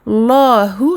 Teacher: quand on a emphatisé le lem, on ramincit le ha et on termine avec encore une fois maddul iwad.